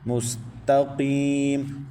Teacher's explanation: قاف حروف مستعلیہ میں سے ہے، اس کو پر پڑھیں۔ قاف کے بعد یا ساکن سے پہلے زیر ہے تو یا مدہ ہے، ایک الف تک کھینچیں گے۔